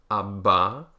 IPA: b